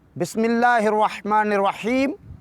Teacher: بسم اللہ میں اللہ کے لام کو باریک پڑھیں گے، کیوں؟ اس لیے اس سے پہلے زیر ہے۔